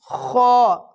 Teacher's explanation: खा अदा होता है उस हल्क के शुरू वाले हिस्से से